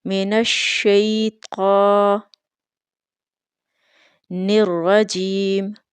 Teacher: طا کے اوپر کھڑی زبر ہونے کی وجہ سے اس کو 2 الف کے برابر لمبا کر کے پڑھیں گے